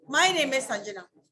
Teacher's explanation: when you're answering a question, your tone is falling.